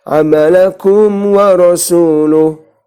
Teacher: tanpa ada dengungan di bacaan kum ya.